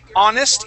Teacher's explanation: even though it starts with an H, the sound at the beginning of the word is ah, which is a vowel sound